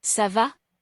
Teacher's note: the hook changes the sound of the C from a hard k sound to a soft s sound